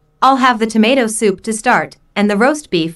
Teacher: tomato soup roast beef mashed potatoes and peas are stressed because the food order is the important information here